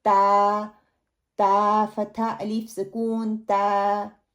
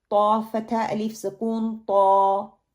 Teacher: اب وہی جگہ کو استعمال کرنا, لیکن طا جو ہے اس میں اتباق اور استعلا پایا جاتا ہے. زبان کا پچھلا اور مڈل والا حصہ اٹھتا ہے.